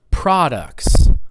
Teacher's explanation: So you notice how product is on the first syllable.